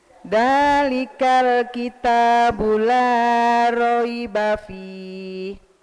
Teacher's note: La-nya kepanjangan sedikit. Terlalu agak gondrong.